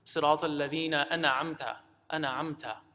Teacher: Incorrectly, we end up saying that. We kind of bounce on the noon, giving it some sort of qalqala or making it seem as if it has a fatha.